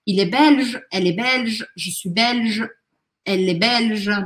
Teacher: Belge é sempre igual. E esse L, ele é bem marcadinho. Eu não posso falar belge engolindo L.